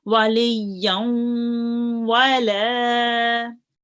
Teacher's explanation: do the nasal sound and prolong it for 2 seconds and join on to the vowel